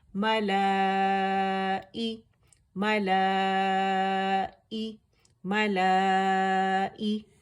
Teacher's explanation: اور حمزہ اقص الحلق سے ادا ہوگا